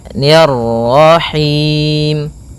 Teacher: Ro tebal maka kita baca dengan bacaan tebal rnya